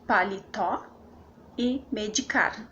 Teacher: sílaba tônica é a última por exemplo paletó e medicar né paletó tá na última sílaba que é o pó e medicar também está na última sílaba que é o Car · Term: oxítonas